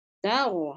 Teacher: huruf ta tipis, ta ro tebal. Hati-hati. Ro tidak ikut terbawa, ta tidak ikut terbawa tebal.